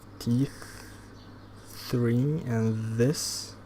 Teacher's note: The tongue touches the teeth, not the lip, as opposed to labiodental.